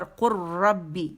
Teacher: لام کا را کے اندر ادغام ہو جائے گا، پوری طرح وہ مرجنگ وہ را کے اندر چلا جائے گا. اس وجہ سے لام خالی نظر آئے گا اور را جو ہے وہ مشدد پڑا جائے گا، ٹھیک ہے.